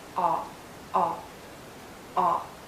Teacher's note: It's a short sound and a very open and rounded sound. Make your lips rounded and lower your jaw, aw, aw, aw.